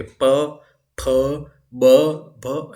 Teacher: आप प बोलो, आपके दोनों होंठ टच होंगे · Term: ओष्ठ